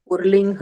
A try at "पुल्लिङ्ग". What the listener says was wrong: हाँ, पुल्लिंग, double ल, पुर्लिंग र नास्ति, पुल्लिंग।